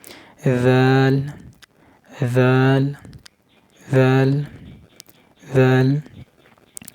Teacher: সামনের উপরের দুই দাতের আগার সাথে উচ্চারণ করতে হবে